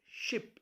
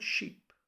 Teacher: it's a short I whereas in the first I'm using double e so therefore it has to be stretched